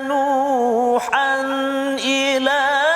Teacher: tanwin baris dua di atas bertemu dengan hamzah. Maka kat situ kita tak boleh dengung, kita kena jelaskan bacaan kita. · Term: Izhar halqi